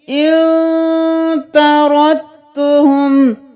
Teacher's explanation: طردتہم نہیں کرنا، یہاں دال کو نہیں پڑھیں گے